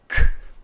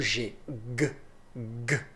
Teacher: Ok então a gente tem que o k é voiceless e o g é voiced